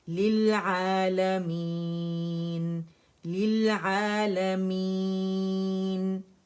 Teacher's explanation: اچھے سے لیل نہیں کہیں گے، لام کسرہ لے نہیں ہے، لی ہے